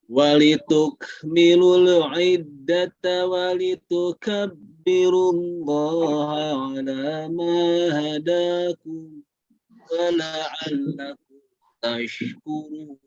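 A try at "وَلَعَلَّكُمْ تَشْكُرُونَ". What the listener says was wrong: Baik, sedikit lagi coba lebih dibesarkan sinnya. Wa la'allakum tashkurun.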